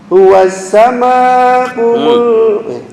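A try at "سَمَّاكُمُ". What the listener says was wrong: Tasdid. Dengung di mim, ya, ditekan dua harokat.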